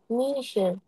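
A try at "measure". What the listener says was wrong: মিশার না, মিজার, মিজার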